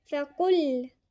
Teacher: فقل القاف هنا مضمومة واللام من الحروف المرققة، نخلي بالنا عشان القاف مفخمة فهتفخم معانا اللام، لا نوضح انه اللام هنا مرققة، فنقولها ازاي؟